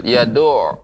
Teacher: ain itu dia ketika ditasydidkan ya, maka dia memantul. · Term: ain yang bertasydid